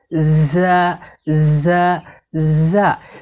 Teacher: ঝা হরফকে জিহ্বার আগা সামনের নিচের দুই দাঁতের গোড়ার সঙ্গে লাগিয়ে শীর্ষসহ পড়তে হয়।